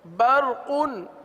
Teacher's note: آگے ہے برقن، برقن. دیکھیں را کو تو پر پڑھیں لیکن قاف کو بھی پر پڑھیں، قاف باریک نہ ہونے پائے